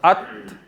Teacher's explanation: आपकी ज़बान जो है वो दांतों के कुछ पीछे लग रही है